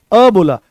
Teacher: अ जो है ये आपका मध्य स्वर है